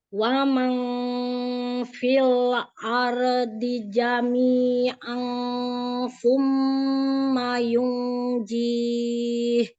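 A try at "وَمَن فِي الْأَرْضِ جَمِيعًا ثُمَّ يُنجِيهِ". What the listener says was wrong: Ikhfa-nya tipiskan lagi ya, nun sukun ketemu fa, lalu tanwin ketemu sa, semuanya huruf tipis. Dari mana makhrajnya? Huruf fa, maka dari situ udah siap-siap. Dari situ ikhfa-nya. Jadi jangan ke tengah. Fi ke depan. Wa fi jami'an jami'an summa dari depan.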